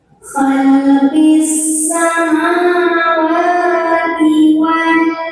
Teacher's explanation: Wah, di sini ada hukum tajwid namanya mad asli atau maqami karena ada garis fathah tegak di atas huruf waw. Maka cara membacanya dengan dipanjangkan sepanjang 2 harakat wawnya.